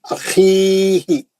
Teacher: خا اچھا پڑھیں گے اور کھردرا پڑھیں گے اور مد اصلی کریں گے